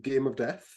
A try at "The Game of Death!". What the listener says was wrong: You pronounced that wrong, didn't you? It's the Game of Death! Because it's got an exclamation mark.